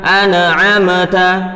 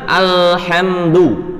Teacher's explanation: Nun sukun dan mim sukunnya kita pantulkan